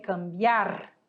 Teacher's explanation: a mais forte é a última cambiar como era um ditongo ela não vai se separar Então